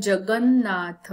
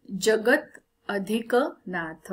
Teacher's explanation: शब्द बघा जगन्नाथ आता इथे काय झालंय जगत अधिक नाथ म्हणजे त आणि न एकत्र येऊन न दोन न बनलेले आहे